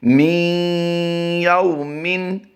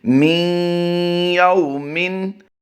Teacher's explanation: یو کو ہم لمبا نہیں کرتے، واو لین کا قاعدہ ہوتا ہے